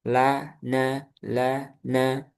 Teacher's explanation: Ujung lidah pada posisi gusi dua gigi atas di bawah sedikit setelah huruf lam. Jadi enggak jauh-jauh dari huruf lam. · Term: huruf nun